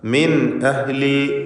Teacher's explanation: സാക്കിനത്തായ നൂനും ശേഷം ഹംസയും ഇൽഹാർ ഹൽക്കി ചെയ്ത് മണിക്കാതെ വെളിവാക്കുക.